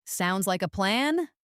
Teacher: If said with a questioning upward tone, sounds like a plan, it can actually mean the opposite, expressing doubt or seeking confirmation. So the confident downward tone is standard.